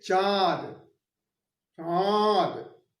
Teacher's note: अब अनुनासिक। अनुनासिक जो मुख और नाक दोनों से प्रयोग होता है